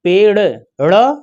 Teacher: जीभ उठकर मूर्धा को छूती है और छूने के बाद तुरंत नीचे गिरती है। इस कारण को हम बोलते हैं उच्छिप्त ध्वनियां।